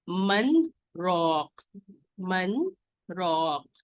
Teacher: من کو الگ پڑھیں گے، چھوٹا پاز لیں گے اور پھر راک پڑھیں گے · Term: سکتہ